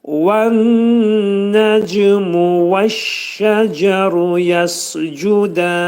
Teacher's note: Amma nun hərfi şəmsiyə samiti olduğuna görə vəl-nəcmu şəklində oxunacaq. Nun hərfi burunda sıxılacaq. İdğam mə'al-gunnədir.